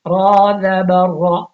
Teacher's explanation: را موٹا آ گیا کیونکہ زبر آ گیا